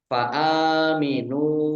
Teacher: alif fathah berdiri mat tobi'i, nun domah wawu sukun juga mat tobi'i, panjang 2 harokat